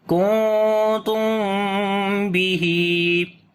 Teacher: We make ikhfa sound, which is light ikhfa here. After the meme sakin, there is ba, so we make ikhfa shafawi here. Like the meme sound we hide, and also we make a soft sound on the meme, so we say kuntum bihi.